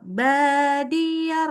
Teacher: Badiar ada i-nya kecil suaranya tapi tetap ada.